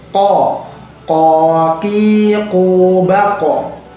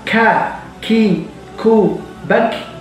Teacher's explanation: kalau ko itu harus tebal, tapi ka itu harus tipis. Ko, ki, ku, ba, ko.